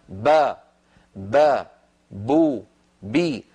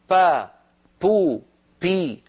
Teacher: فان العرب تنطق الباء مجهوره فيقولون با بو بي ولا تقول العرب ابدا با بو بي · فإن العرب تنطق الباء مجهورة